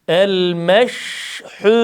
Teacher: Lam harfinde buradaki lam harfinde de eee harfin sesini ikilemeden bir defa okuyup geçiyoruz. Sakin şın harfinde şın harfinin sesi akacak.